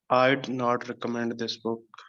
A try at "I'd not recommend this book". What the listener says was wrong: you want to stress on this okay you're not going to stress on recommend